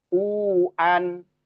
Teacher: U-nya diayun dua harakat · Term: mad thobi'i